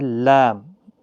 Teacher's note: لام، دواہک کے مسوڑوں سے ادا ہوتا ہے